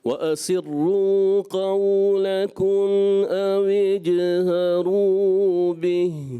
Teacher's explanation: یہ جیم ہوتا ہے چے نہیں، اردو میں چے ہوتا ہے ہمارے ہاں مگر عربی میں چے نہیں ہوتا · اویج چے جیسی آواز نہ آئے